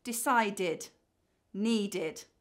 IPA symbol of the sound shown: id